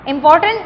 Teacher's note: امپور، POR پہ ہم سٹریس دیتے ہیں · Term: سٹریسڈ سلیبلز